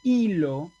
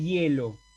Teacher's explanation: en la palabra hilo la y es vocal pero en la palabra de hielo es semi consonante es simplemente un sonido para que se apoye la verdadera